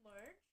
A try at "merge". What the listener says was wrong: When you say merge, it sounds like merch. Merge.